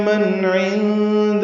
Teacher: من میں نون ساکن کے بعد عین آنے کی وجہ سے اظہار ہے، اظہار حلقی